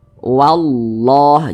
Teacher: maka lafaz Allah tuh dibaca tebal, dibaca tabkhim